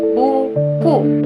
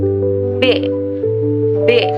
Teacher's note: Pada saat menyebut konsonan B, kamu pasti sadar pengucapannya terhambat karena kedua bibir bersentuhan untuk menghentikan aliran udara